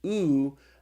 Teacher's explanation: is pronounced ooh like in the word soup